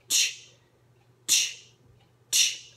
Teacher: it's a cross between a t and a sh sound um so again it's teeth together it's kind of pushing that